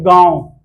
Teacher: नाक और मुंह दोनों से उच्चारण हो रहा है। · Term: चंद्रबिंदु